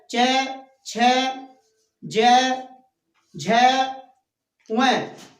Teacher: हमारा जो च वर्ग है वो तालु से बोला जाता है। जब तालु से बोला जाता है तो च वर्ग के जितने भी व्यंजन हैं च, छ, ज, झ, व, अर्थात ये सारे के सारे व्यंजन च वर्ग के ये तालु से बोले जाने के कारण इनको हम तालव्य व्यंजन कहते हैं।